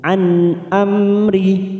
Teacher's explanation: nun sukun bertemu Hamzah Idhar halq kita baca jelas tanpa mendengung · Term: idhar safawi